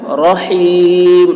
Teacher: رحیم کے را بھی پر ہوگی اور ہا حلق سے ادا کریں گے